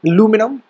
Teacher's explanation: In the American English, we use the term aluminum with the stress being on the second syllable